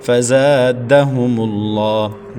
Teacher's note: زا کے بعد الف مدہ ہے، ایک الف تک کھینچیں گے۔ فزادہم اللہ، دال بڑی حرکت ہے، بغیر کھینچے پڑھیں گے۔